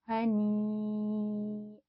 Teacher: mad tabi'i bertemu hamzah di dalam satu kalimat dinamakan mad wajib muttasil, panjangnya antara 4 sampai 6 harokat